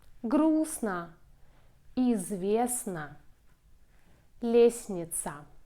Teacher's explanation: Usually we read and pronounce all letters in the word, but there are some exceptions. In this combination s, t, n, we don't pronounce t.